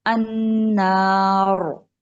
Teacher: नून को मोटा नहीं कर देना, ना ही अगले अलिफ को मोटा कर देना, सिर्फ रा को मोटा रखना है।